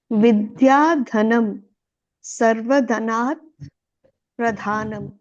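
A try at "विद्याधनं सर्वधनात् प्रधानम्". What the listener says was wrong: Just fluently, without any pause, without any pause, break. Vidyadhanam Sarvadhanat Pradhanam.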